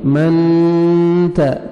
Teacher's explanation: یہاں پہ اپنے نوز میں ساؤنڈ لے کے جانا ہے، اخفاء کریں گے